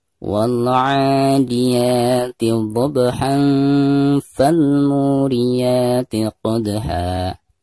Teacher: Karena ada tanwin berhadapan dengan salah satu huruf ikhfa, yaitu fa ya. Maka cara membaca tanwinnya itu harus disamarkan, disertai dengan dengung. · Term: diikhfakan